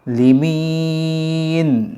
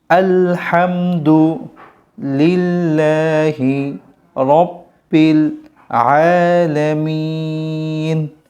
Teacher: অকফ করার সময় এখানে তিন আলিফ টান হবে। একটু দীর্ঘ করে পড়তে হবে দীর্ঘশ্বাসে।